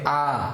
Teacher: আমাদের জিহ্বার অবস্থান একদম কেন্দ্রে। কেন্দ্রীয় বলতে হচ্ছে আমাদের মাঝখানে, অর্থাৎ শেষেও না আবার সামনেও না, মাঝখানে অবস্থান করবে যখন আমরা স্বরধ্বনি আ উচ্চারণ করব, ঠিক আছে?